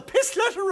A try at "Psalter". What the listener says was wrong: Psalter, Mr. Chairman, Psalter. P-S-A-L-T-E-R, Psalter, not pistleter. The P is silent.